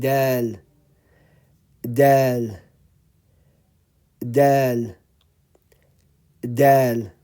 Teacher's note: the tip of the tongue is touching the upper front teeth. And you say dal, dal, dal, dal.